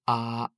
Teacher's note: The first tone is a straight tone. It's from left to right.